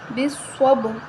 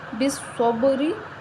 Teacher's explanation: صاد کو موٹا پڑھیں گے، حروف مستعلیہ موٹا حروف ہے اور با پہ قلقلہ کریں گے، حروف قلقلہ میں سے ہے، جزم آ رہا ہے، بالصب، را کے نیچے زیر ہے، را کو باریک پڑھیں گے، بالصبری۔